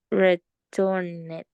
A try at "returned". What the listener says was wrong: No, return it or return it no existe. returned. Returned with D at the end. The sound, the final sound is D. Returned.